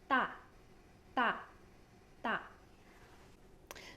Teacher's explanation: The vocal cords are actually very tense, so your muscles inside of your throat is tense. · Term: tense sound